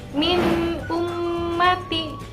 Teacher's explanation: di situ ada nun sukun bertemu hamzah, dibacanya jelas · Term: idhar